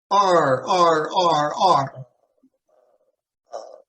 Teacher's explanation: r is you take your tongue and you push it to the back of your mouth so put it in the front first and then go to